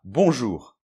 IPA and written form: bɔ̃ʒur (Bonjour)